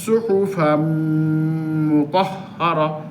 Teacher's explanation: আর যদি এদগাম বলা হয়, যেমন সুহুফাম মুতাহহারা, এই ফায়ে মিমকে ধরে ফেলছে, একবার মিলে গেছে, এখানে মিলে অনেকটা গুন্না হলো, এটা হলো এদগাম।